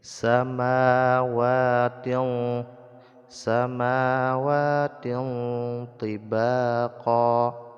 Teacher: menyembunyikan bunyi nun mati ataupun tanwin ke dalam huruf tho sehingga tanwinnya tidak lagi terdengar jelas akan tetapi sudah terdengar samar-samar jadi dibaca samar-samar seperti ini samawatil samawatin tibaqo ya seperti pada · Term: ikhfa